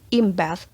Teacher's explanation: bertemu dengan b, maka itu melebur menjadi m sound. Jadi kedengarannya seperti m.